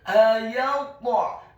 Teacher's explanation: Tafkhim tebal dengan posisi bibir bawah kita agak tertutup, dan membaca huruf ta yang sukun bukan hanya tafkhim atau tebal, tetapi juga wajib untuk diqalqalakan atau dipantulkan